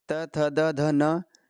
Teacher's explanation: जीभ दांतों से टकराती है इस प्रकार त थ द ध न पांचों ही वर्णों का उच्चारण स्थान होगा दंत से